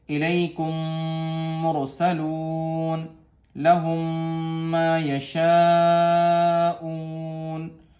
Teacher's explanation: ادغام شفوی میم کو میم سے ملائیں گے